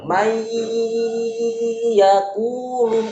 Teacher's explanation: Walaupun dia masuk ke huruf ya, tapi masih ada gunahnya. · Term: idgham bi gunnah